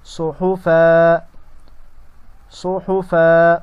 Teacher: وقف کے حالات میں الف سے تبدیل کر کے پڑھا جائے گا